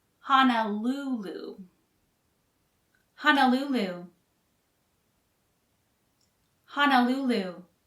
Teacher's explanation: Honolulu is 4 syllables long, with the third syllable stressed.